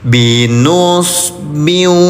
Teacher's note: maka bunyi tanwinnya ditempelkan ke huruf wau. Nah, terus didengungkan selama dua harakat. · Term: idgham bigunah